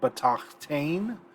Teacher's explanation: And as a result, we have propretonic reduction. This bait syllable is too far away from the tonic to have its full vowel, so it reduces.